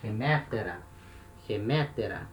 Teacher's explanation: E o neutro, terminação do neutro, nominativo, é um alfa. Esse alfa é um alfa breve, né? Então, o acento permanece no mesmo lugar.